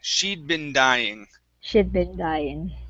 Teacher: so don't finish that d sound